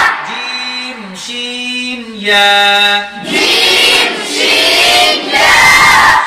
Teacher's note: জিহ্বার মধ্যখান তার বরাবর উপরে তালুর সঙ্গে লাগাইয়া